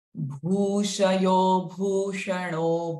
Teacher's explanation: First sh is hissing sound. Next sh is a retroflex.